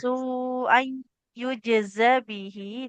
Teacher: tanwinnya bertemu ya, maka dileburkan ke huruf ya-nya, ditahan di huruf ya-nya.